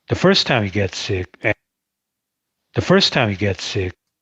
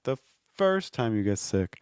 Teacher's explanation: The first time you get sick, the stress here is on first. The way we indicate that is when you stress a word, you need to go higher in pitch. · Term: stressed word